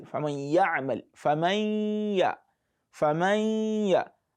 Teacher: take your time a little bit on the nun while you are trying to transit between the nun and the ya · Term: idgham naqis